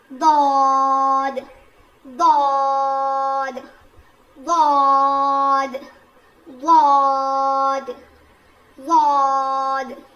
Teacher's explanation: زبان کی کروٹ کو اوپر کے داڑ میں لگا کر پڑھیں گے. لیفٹ بھی کون سا بھی لے لیں آپ، لیفٹ لے لیں یا رائٹ لے لیں، جیسے آپ کو یعنی آپ کی سہولت ہو.